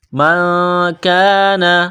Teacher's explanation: نون ساکن کے بعد کاف ہے، یہاں غنہ کریں گے، آواز ناک میں چھپائیں گے. اس ناک میں آواز چھپانے کو اخفا کہتے ہیں.